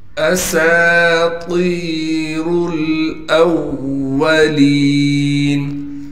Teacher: سین کے بعد حروف مدہ میں سے الف آ گئی لہٰذا سین کو ایک الف کی مقدار کھینچیں گے. طا کو موٹا کر کے پڑھنے کے ساتھ طا کے بعد حروف مدہ میں سے یا ہے لہٰذا طا کو ایک الف کی مقدار کھینچیں گے. را کو موٹا کر کے پڑھیں گے اس لیے کہ را پر پیش ہے. · را کو موٹا کر کے پڑھیں گے اس لیے کہ را پر پیش ہے. پھر را کو ہم لام سے ملائیں گے اس لیے کہ لام ساکن ہے. · حمزہ کو واو سے ملائیں گے اس لیے کہ واو پر تشدید ہے اور تشدید ہونے کی وجہ سے تھوڑا ٹھہراؤ بھی کر کے پڑھیں گے